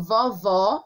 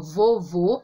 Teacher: quando eu digo vovó, eu abro. Quando eu digo vovô, eu fecho.